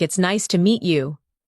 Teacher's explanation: The voice goes up slightly at nice and falls gently at you. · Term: rise and fall